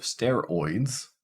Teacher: In the case of steroids, well, it's pretty much spelled exactly how it's pronounced in this case. So this is the oi case, starts at the back, goes to the front.